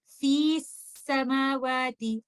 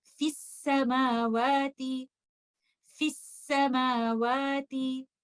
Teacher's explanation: the mad letter will be dropped in pronunciation. In this case, waw is in a mad condition because waw is sakin and before waw there is dhamma.